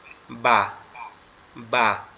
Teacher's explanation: বাটা তো উচ্চারণ হবে আমাদের দুই ঠোঁট একসাথে লেগে পৃথক হয়ে যাবে, তখন উচ্চারণ হবে বা বা, এভাবে।